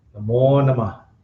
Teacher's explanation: it's pronounced, I think, more like Namah. There's a quick A after the H.